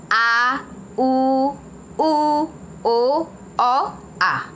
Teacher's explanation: जो जीह्वा है वो पीछे की ओर जाती है, थोड़ा पीछे की ओर ढकेलती है, वह पश स्वर कहलाता है, जैसे आ, उ, ओ, आ।